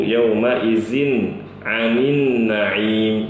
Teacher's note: Lalu pada kata yauma idzin, ini mengubah huruf zalnya menjadi zai.